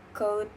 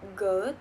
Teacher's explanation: The distinction is voicing. Ke is voiceless, ge is voice, but are velar stop met by the back of the tongue against the soft palate.